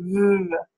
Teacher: again you have that lower lip touching your upper teeth uh but this is a voice laor Dental frickative instead all